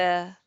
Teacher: That R in the end is swallowed.